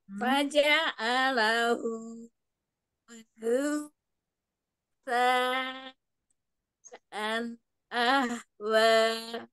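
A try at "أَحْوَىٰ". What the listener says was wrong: Hati-hati ahwanya berubah jadi ha. Rusaan ahwa.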